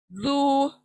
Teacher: जबान की नोक हमारी दांतों के सामने के सिरे को लगेगी, सामने के दांतों के सिरे को लगने से जू सॉफ्टली अदा करना है।